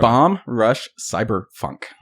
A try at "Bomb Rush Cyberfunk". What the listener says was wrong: See, you're saying it as if there's separation.